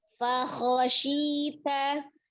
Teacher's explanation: Patokannya bentuk mulutnya seperti huruf fa, seperti bunyi fa berfathah. Ya, dibuka mulutnya, tetapi dengan mengangkat pangkal lidah ketika kho, karena dia termasuk huruf yang tebal ya, dengan tidak memonyongkan bibirnya, tetap dibuka.